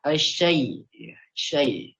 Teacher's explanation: Jadi saat membunyikan ya itu lidah kita terangkat ya. Tengah-tengah lidahnya.